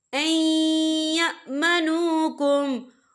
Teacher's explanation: ये देखिए ऐ, यहाँ नून साकिन है, नून साकिन के बाद जो है या आ रहा है, या जो है रुफ़ यरमलून में से है, तो यहाँ पर इदगाम होगा, तो हम इसे थोड़ा सा गुन्ने के साथ पढ़ेंगे।